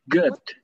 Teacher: good itu bukan G U D, tapi antara E dan U